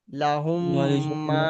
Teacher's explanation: প্রথম মিমটা বাদ চলে যাচ্ছে।